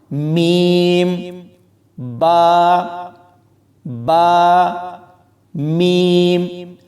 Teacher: میم اور با کو پڑھتے ہوئے ہمارے ہونٹ آپس میں مل جاتے ہیں، اور یہ دونوں حروف ہونٹوں سے ہی ادا ہوتے ہیں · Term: شفوی